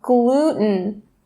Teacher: It's mostly common in North America to drop or stop that T sound